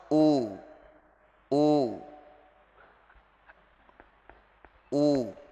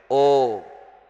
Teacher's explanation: Jadi kalau dhammah harus u, u, tidak boleh o, nggak boleh o, ya.